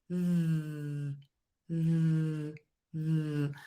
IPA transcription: ð